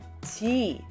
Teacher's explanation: soften that J and don't bring your lips into the sound.